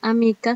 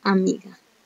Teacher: Con el paso del tiempo es que en nuestro español se transformó el fonema K por el fonema G.